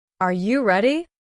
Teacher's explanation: Make your voice go up at the end as if you're asking for an answer. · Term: rising voice